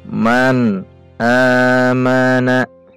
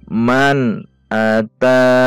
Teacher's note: Man nun sukun bertemu alif, dibaca jelas dan pendek. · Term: izhar